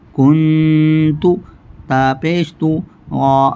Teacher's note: اب دیکھیں یہاں نون ساکن ہے، نون ساکن کے بعد اخفاء حقیقی کے 15 حروفوں میں سے تا ہے، یہاں پر غنہ ہوگا. کاف نون پیش کن سے دیر تک پڑھیں گے.